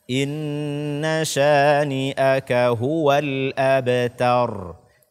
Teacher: Tar, betul-betul dia tipis, ta, bukan to.